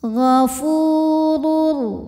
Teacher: maka huruf Fa ini kita panjangkan dua harakat saja ghafurur ro kita bunyikan secara tafkhim karena rnya berbaris tanwin dammah · huruf fa ini kita panjangkan 2 harokat saja